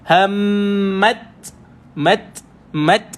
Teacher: huruf hams pada ta ini bila sukun, kita kena matikan T dulu baru keluar S.